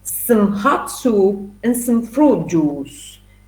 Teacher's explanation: here you have to use the weak form for sum